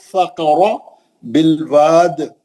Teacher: फ़क़रा बिलवाद, direct जबर है, मोटा पढ़ना उसको